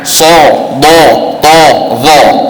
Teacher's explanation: bibir kita muncung bentuk O. Kalau bentuk O bermakna huruf terberat.